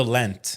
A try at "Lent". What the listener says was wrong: Lent, not lint, Lent.